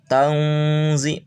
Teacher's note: ketika tang berarti tempelkan ujung lidah ke ujung gigi bawah. Tangzi 2 harakat baca lul karena tidak tasydid, baca alif lamnya. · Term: samar